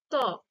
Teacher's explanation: ত বলতে জিভটা কোথায় আসছে? দাঁতে এসে ঠেকছে। তো তার ফলে ত ধ্বনি হচ্ছে, সৃষ্টি হচ্ছে।